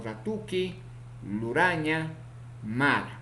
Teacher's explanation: Consonante ra, vibrante, alveolar, sonoro, ocurre también en posición inicial, medial y final.